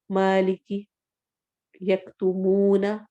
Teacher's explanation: اس صورت پہ میم کو کچھ بھی نہیں کرنا، ویسے ہی پڑھا جائے گا اور کوئی غنہ نہیں ہوگا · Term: عدم غنہ